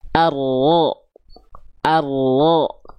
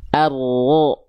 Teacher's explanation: Ujung lidahnya tuh gak nempel, malah dia membuat sedikit celah. Arlo, yang nempelnya punggung lidahnya. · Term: huruf ro